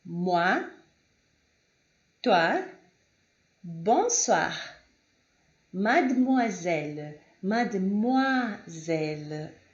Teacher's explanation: a pronúncia deste é sempre wa, wa